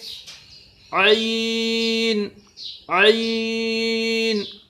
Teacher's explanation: ضاد ضو الف الف عین عین الف، الف کے اندر باریک آواز، عین کے اندر حلق کے بیچ میں سے آواز نکلے گی.